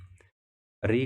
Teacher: री का मूर्धन्य, मूर्धा से इनका उच्चारण स्थान है। ए आई का कंठ तालव्य, यानी कंठ और तालु से।